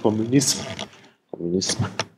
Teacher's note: Also M, ohne dass sich die Stimmlippen bewegen. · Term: stimmlos